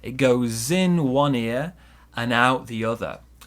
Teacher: the d in and disappears